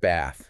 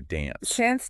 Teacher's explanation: it's longer and more open than other accents and it's thought to be partly a holdover from how vowels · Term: the Dublin a sound